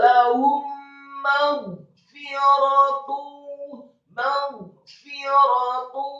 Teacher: ghain yang sukun dibaca tafkhim dan tebal dengan posisi bibir bawah agak tertutup, dan membaca huruf ghain yang sukun atau mati tidak boleh diqalqalahkan atau dipantulkan.